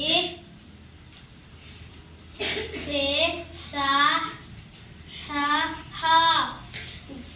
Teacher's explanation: గాలిని బయటికి ఊదుతూ పలికే అక్షరాలను ఊష్మాలు అని అంటారు.